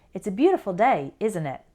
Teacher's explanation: our intonation goes down at the end instead of going up like a normal question